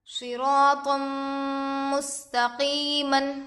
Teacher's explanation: تو پر 2 زبر ہے، تنوین ہوگا، تنوین کے بعد حروف یرملون میں سے میم دوسرے کلمے میں آ کر ہے، اس لیے غنے کے ساتھ ملا کر پڑھیں گے۔ اس کو ادغام مع الغنہ اور ادغام ناقص بھی کہتے ہیں۔